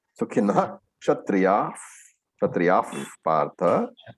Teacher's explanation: The ksha following the visarga means the visarga has to be pronounced completely.